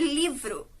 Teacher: tem um destaque nessa palavra ou ainda dá o livro né esse li também tem um destaque dentro da palavra ele também tem um som mais forte que a outra sílaba bom esse assento que não é gráfico ele é muito importante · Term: sílaba de destaque